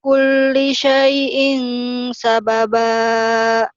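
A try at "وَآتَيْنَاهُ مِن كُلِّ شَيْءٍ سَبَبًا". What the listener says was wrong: Kulinya jangan terlalu buru-buru ya. Inna makkanna lahu fil ardi wa atainahu min kulli syai'in sababa. Jadi kau kurang berani nyamper-nyampernya. Wa atainahu min kulli syai'. Ifa ya syai'in.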